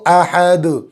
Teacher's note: مد کھینچیں گے، دال پر قلقلہ ہوگا